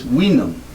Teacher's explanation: originally this, which looks like our V, was pronounced like a W